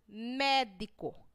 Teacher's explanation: Mé, na palavra médico, foi pronunciada com mais intensidade. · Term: proparoxítona